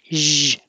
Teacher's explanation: make a good zh in vision. It's the same as sh, but with sound.